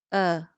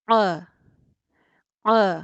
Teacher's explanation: हमजा में ज़ुबान का पिछला हिस्सा हलक में पीछे की तरफ मूव नहीं करता, क्योंकि वो बहुत नीचे से अदा होता है ना, तो ज़ुबान का पिछला हिस्सा हम इतनी नीचे तक तो नहीं फेंक सकते।